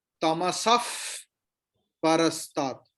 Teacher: अभी विसर्ग के बाद प है, तो विसर्ग का प्रोनाउंसिएशन विल बी लाइक फ. इसको कहते हैं उपधमानीय.